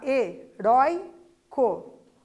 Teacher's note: heróico, o rói, que é a penúltima sílaba, é a sílaba tônica. Então, é uma paroxítona, lembram?